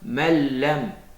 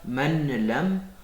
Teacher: On n'entend pas le nun parce qu'on l'a fusionné du lam.